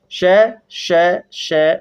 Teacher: दो उच्चारण अव्यय इतनी निकटता पर आ जाते हैं कि बीच का मार्ग छोटा हो जाता है वायु संघर्ष के साथ बाहर निकलती है · वायु संघर्ष के साथ बाहर निकलती है, तो इन्हें कहते हैं संघर्षी व्यंजन।